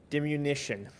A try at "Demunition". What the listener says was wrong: It's not dimmunition. That's not how it's spelled.